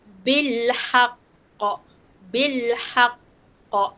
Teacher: Lantunan dia lagi besar lah sebab dia kena berhenti sekejap lepas tu melantun. Sebab dia ada syaddah atas. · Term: qalqalah akbar